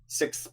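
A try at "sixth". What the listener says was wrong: Yeah, you're missing like an S almost. Yeah, so like usually most people say it. Basically, it would be SICSTH. That's how most people say it, and you just leave out that S. It's just SICTH.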